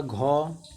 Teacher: जो आपका सघोष होता है ना, इन व्यंजनों के उच्चारण में जो स्वर तंत्रियां हैं ना उनमें कंपन होता है